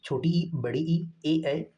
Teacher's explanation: अग्र स्वर जीभ के आगे वाले हिस्से से उच्चारित होता है।